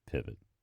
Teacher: the second syllable of pivot contains a vowel that is a schwa